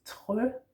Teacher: remember that R's in Danish are in the throat, or at least those that we do pronounce, like that.